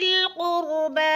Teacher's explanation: با کے اوپر کھڑی زبر ہے اور اس کو ایک الف کے برابر کھینچ کر پڑھنا ہے